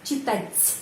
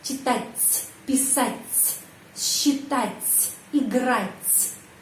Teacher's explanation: Terus T tanda pelemah selalu pengucapannya C, C, читать. Seperti huruf T sama S.